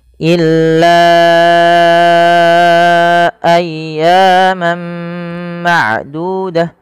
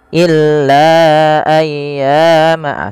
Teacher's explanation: Illa ayyaman ma'dudah, dan tidak boleh dikurangi daripada kadarnya, jangan sampai kita baca hanya 2 harakat misalnya illa ayyama seperti itu. Cukup kita harus memanjangkan sepanjang 4 atau 5 harakat. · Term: mad jaiz munfasil